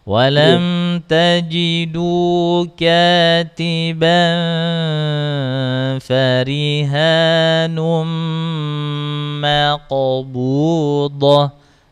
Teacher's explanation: Jangan berat-berat jangan ketelan nanti, jangan tebel-tebel huruf qafnya. Maksudnya jangan terlalu mantulnya, jangan keras-keras. Mantul yang ringan aja.